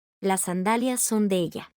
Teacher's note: juntarán las dos primeras palabras y anularán el sonido de una de las consonantes S